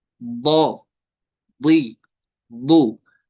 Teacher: दौद होता है अदा जुबान की करवट, साइड्स, वो लगते हैं लास्ट वाले टीथ के साथ, मोलर्स के साथ, जिनको विजडम टीथ भी कहते हैं, दाढ़ें कहते हैं उनको, ऊपर वाले दाढ़ों की जड़ के साथ।